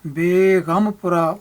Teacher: ਉੱਥੇ ਗੱਗਾ ਜਿਹੜਾ ਉਹ ਸਿੰਪਲ ਸਾਊਂਡ ਨਹੀਂ ਹੈ, ਉੱਥੇ ਗੱਗੇ ਦੀ ਐਸਪੀਰੇਟਡ ਸਾਊਂਡ ਹੈ, ਦੋਹਰੀ ਸਾਊਂਡ ਕਹਿ ਸਕਦੇ ਜਿਹਨੂੰ ਆਪਾਂ ਕਹਿੰਦੇ ਹਾਂ ਪੈਰ ਬਿੰਦੀ ਵਾਲੀ ਸਾਊਂਡ ਗੱਗੇ ਦੀ ਉੱਥੇ ਚੱਲਦੀ ਹੈ, ਜਿੱਥੇ ਅਸੀਂ ਬੇਗਮਪੁਰਾ ਪੜ੍ਹਾਂਗੇ।